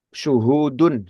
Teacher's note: Sebetulnya di situ ada bunyi panjang ya sebetulnya. Di ha dhammah bertemu dengan waw sukun.